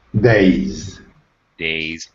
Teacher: Days, again with a Z sound, because A actually is a vowel sound.